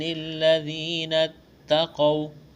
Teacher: تا میں سختی کریں گے، قاف کو موٹا کرنا ہے